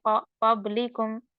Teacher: क़ाफ सबसे ज्यादा मोटा पढ़ा जाएगा क्योंकि दो सिफात है जो क़ाफ में होती है